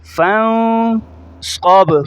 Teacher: فا کو نون کے ساتھ ملاتے ہوئے غنہ کریں گے، ناک میں آواز لے جائیں گے